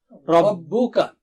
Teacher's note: ربو کا را موٹا ہے اور با کاف پتلا ہے